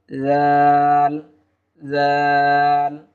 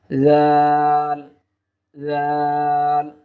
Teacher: জিহ্বার আগা উপরের দুই দাঁতের আগার সঙ্গে লাগিয়ে দিলেই আমরা জাল হরফটি আমরা পেয়ে যাব